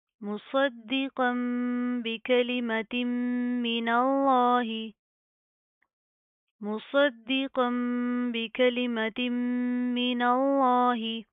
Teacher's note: لفظ اللہ کو موٹا پڑھیں گے کیونکہ اس کے ماقبل نون کے اوپر زبر ہے